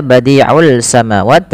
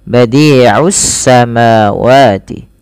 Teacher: langsung idghamkan saja ke huruf sin sehingga sinnya berharakat tasydid. Tidak lagi dibaca badi'ul samawat, tapi langsung badi'us samawati.